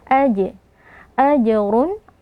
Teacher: Jim yang sukun di tengah-tengah kata hukumnya Qalqalah Sugra kita beri pantulan · Lahum ajrun, mim sukun berjumpa dengan hamzah, hukumnya adalah izhar syafawi, kita baca dengan jelas tanpa berdengung. Ajrun, jim yang sukun di tengah-tengah kata, hukumnya qalqalah sughra, kita beri pantulan. Ajrun, ra dhammatain, kita angkat pangkal lidah karena dia tebal.